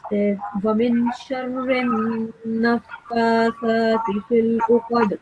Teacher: Right here is noon mushaddad, so we have to prolong this noon sound for 2 seconds and produce a nasal sound.